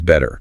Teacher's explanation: A really quick light tap of the tongue. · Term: T flap